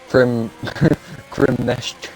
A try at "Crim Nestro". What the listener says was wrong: Crim Nestro. The R at the end. Just call him Crim Nesto, that's fine.